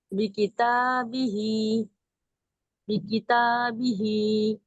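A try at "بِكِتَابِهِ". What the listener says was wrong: तालिफ जबर था यहाँ पर, या अलिफ मद्दा हो रहा है, इसको भी खींचिए।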